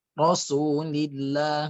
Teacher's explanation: Apabila sebelumnya fathah atau dhammah, dia menjadi tebal, mufakhamah ataupun tafkhim. Tapi kalau dia kasrah, Rasulillah, nah itu menjadi tarqiq, ya, tipis.